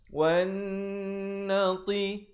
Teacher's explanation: Nun sabdu hukumnya wajibul gunnah, wajib dengung di sini 2 harakat.